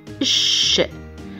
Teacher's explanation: Placez le haut de la langue plus en arrière, c'est-à-dire derrière le lieu de production de son S. Lorsque vous expulsez l'air de votre bouche, vous devez sentir que l'air passe entre le bout de votre langue et le palais dur. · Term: son ch